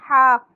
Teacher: ہا کو ہم حلق کے درمیانے حصے سے ادا کرتے ہیں